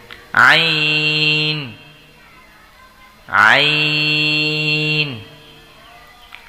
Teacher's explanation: আইনটি হবে গলার মধ্যখান থেকে দুই নম্বর মাখরাজ হলকের মধ্যখান থেকে উচ্চারিত হয়